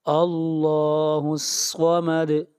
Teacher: اللہ الصمد، صاد، صاد کو موٹا پڑھیں گے، صاد حروف مستعلیہ میں سے ہے۔ اللہ الصمد، میرے بات پڑھیے، اللہ الصمد، اللہ الصمد، اور دال کے اوپر قلقلہ ہوگا، یعنی آواز کو ہلائیں گے۔